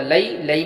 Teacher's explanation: لئی میں یا لین ہوا، نرم آواز جلد ادا کریں گے